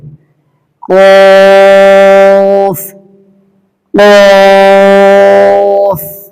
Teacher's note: কফ হরফটা 3 আলিফ থেকে 4 আলিফ প্রাণ দিয়ে পড়তে হবে। এটা উচ্চারিত হয় জিহ্বার গোড়া এর বরাবর উপরে তালুর সাথে লাগিয়ে এবং এটা একটু মোটা আওয়াজে উচ্চারিত হবে।